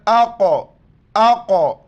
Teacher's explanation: امزہ کو قوف کے ساتھ ملائیں گے، قلقلہ کریں گے، جھٹکے کے ساتھ پڑھیں گے